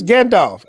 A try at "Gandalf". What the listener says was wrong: You don't have the pronunciation right. That's Gandalf. They don't know how to pronounce L. That's Gandalf.